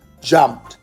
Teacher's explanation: No extra sound, just a sharp t at the end. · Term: ninja sound